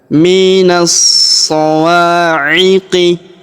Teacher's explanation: Alif lam syamsiyah. Alif dan lamnya tidak dibaca karena huruf na langsung sambung masuk ke huruf so ya. Kita tahan dan tekan.